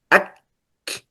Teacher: في الكاف فيها حبس للنفس ثم همس. مثلا آه، أك، تنظر، حبس للنفس، أك، ثم همس.